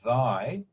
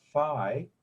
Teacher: you say thy, you'll feel a trill in your throat. And if you say thigh, you won't hear that same trill until you get to the I part. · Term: voicing